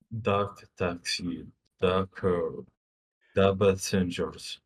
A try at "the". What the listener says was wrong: But try to be careful pronouncing the th sound in the. No, the. No, the. No, the taxi.